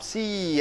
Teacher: you raise the voice you raise the sound and slowly it Glides down at that time you have to keep your tongue tight now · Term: tensing the bubble